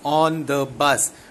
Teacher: bus is a content word, so there will be a stress on the word bus. So that is anapestic. · So two unstressed and one stressed syllable.